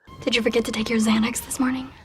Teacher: the X at the beginning of Xanax is pronounced as a Z sound. The second X is pronounced as the X, KS sounds.